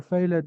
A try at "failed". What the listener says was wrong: Failed. So please, the E is silent. Lived and failed.